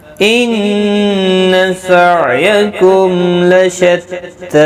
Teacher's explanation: ان نون مشدد پر غنہ ہوگا · سعیکم عین ساکن کو ہلانا نہیں، میم پر اظہار شفوی ہوگا، گنہ نہیں کریں گے. تا کو ایک الف کی مقدار کے برابر کھینچ کر پڑھیں گے وقف کی صورت. ملانے کی صورت میں بھی ایک الف کے برابر کھینچنا ہوگا.